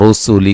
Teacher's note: اور رسولی کا را کو موٹا ادا کریں گے